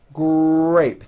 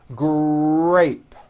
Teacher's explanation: the R sound is stronger and you even hear it more than the G sound. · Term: R blends